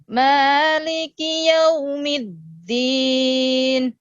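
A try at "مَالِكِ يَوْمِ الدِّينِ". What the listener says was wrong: Ya, middin. Ya, jadi dal bertasdid middin. Jadi jangan sampai ada kesan kedengarannya itu ta middin, tapi mid dari awal udah sebut dal middin. Jadi bukan middin.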